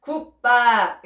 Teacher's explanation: 지금 기역 뒤에 비읍이 된소리 비읍으로 바뀌고 있어요. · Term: 된소리 되기